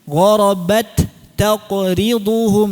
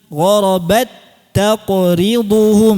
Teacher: Kalau izhar bagaimana? Ta pertamanya dihadirkan hamsnya.